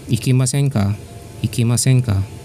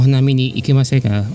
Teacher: So in Japan, minasan, sometimes the way you exude an inviting sentence to your conversant, you will use the masen form or negative form, and then you add ka, but do not raise the tone, just a level tone for ka, which means you're inviting. This is not necessarily a question, but this is a type of sentence that looks like a question, but actually the tone for ka is not that rising tone but level tone.